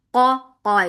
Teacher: Qa is heavy. Make qaf nicely heavy for fatha open jaws.